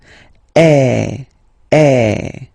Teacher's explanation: the sound that you will have to produce is e. So it's really open. I mean the sound is really open.